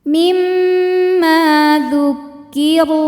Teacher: Sebab ada alif yang sebelumnya berbaris fathah. Maka huruf mim panjang 2 harokat. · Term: mad tabi'i zahiri